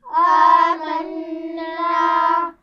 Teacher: اور نون پر غنہ بھی ہو رہا ہے، یہ یاد رکھیے، نون پر تشدید ہے.